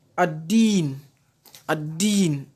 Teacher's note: Tandis que le deuxième type de lam, le lam solaire ou lam shamsiya, c'est dans le cas de l'exemple en dessous. Le lam n'est pas perçu dans la lecture. Le lam n'est pas entendu dans la lecture.